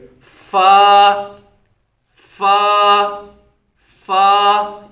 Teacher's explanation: विया में है पहले फा फा कहां से सदा होता है ऊपर के दांतों का किनारा और निचले होठ का तर हिस्सा ये जो तरता हिस्सा होता है निचले होंठ का तरता हिस्सा · اوپر کے دانتوں کا کنارہ اور نچلے ہونٹ کا تر حصہ۔ یہ جو تر حصہ ہوتا ہے، نچلے ہونٹ کا تر حصہ اور اوپر کے دانتوں کا کنارہ، ان کو جو ہے اوپر کے دانتوں کے کناروں کو نچلے ہونٹ کے تر حصے کے ساتھ لگا کے اس فا کو ادائیگی کریں گے، فا، فا، فا، اس کی ادائیگی کریں گے۔